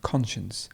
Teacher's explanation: the stress would be at the beginning and then we have the sure sound